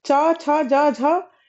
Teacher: यह जो वर्ण है यह तालव्य है क्योंकि देखिए च, छ, ज, झ इन ध्वनियों के उच्चारण में इन वर्णों का जो उच्चारण है उसमें जीभ जो है वह तालु को स्पर्श कर रही है।